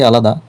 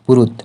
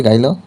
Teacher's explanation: দুই স্বরের মাঝে হকার লোপ হয়